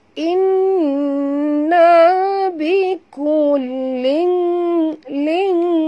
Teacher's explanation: Sini sahabat tanwin. Tanwin baris dua bawah bertemu dengan kaf. Ikhfa hakiki. Ya, kena sembunyi dan dengung.